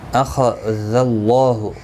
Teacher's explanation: خا حروف مستعلیہ ہے، پر پڑھنا ہے. اللہ کا لام اس زبر کی وجہ سے پر پڑھا جائے گا.